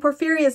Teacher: Porphyria’s name, being 4 syllables that are unstressed, stressed, unstressed, unstressed